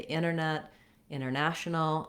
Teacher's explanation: in nt blends we often leave the tea off